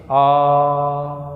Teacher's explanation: उच्चारण करते समय होठ गोल नहीं होते। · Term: अवृत्ताकार